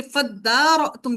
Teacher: دال کے اندر ادغام ہو گیا، یعنی کہ ان دونوں کو ملا دیا، کیونکہ دونوں کا مخرج ایک ہے